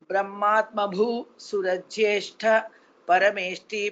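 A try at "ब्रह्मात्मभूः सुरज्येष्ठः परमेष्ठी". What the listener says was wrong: Visarga pa, again the same mistake. Brahmatmabhu surajyeshtha parameshti. You have to join. Half visarga should be pronounced.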